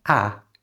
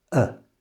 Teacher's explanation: To say this like a native speaker change the ah to a schwa sound. So, it's not ah, it's uh, it's that little uh sound.